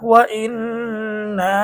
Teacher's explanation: এই যে এখানে এক জের আসছে অর্থাৎ হরকত, হরকতের পরে নুনের মধ্যে তাসদীদ হয়েছে, যার কারণে গুন্না করে পড়তে হবে। · এই যে এখানে একটা রয়েছে জবরের পরে আলিফ, জবরের পরে আলিফ হচ্ছে মদের হরফ, আর মদের হরফ হলে এক আলিফ টানতে হয়। এখানে জবরের পরে আলিফ আসছে, যার কারণে আমরা এক আলিফ টেনে পড়বো। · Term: ওয়াজিব গুন্না, মধ্যে তবাই